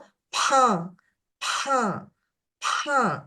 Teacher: coming out through the nose so it sounds as a p you can hear the distinct Escape of air that comes through the nose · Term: abnormal nasal air flow